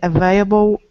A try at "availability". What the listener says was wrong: You forgot you forgot the la.